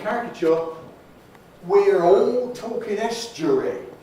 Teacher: all spelled aw reflects what we call l-vocalization